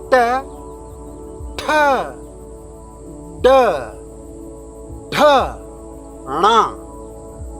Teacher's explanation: the sound of ta basically the tip of the tongue which hits the like the front part of the palate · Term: taverg